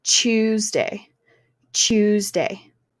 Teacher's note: at the beginning of words, he did ch for like Tuesday. Instead of Tuesday, instead of the t- sound, he used ch.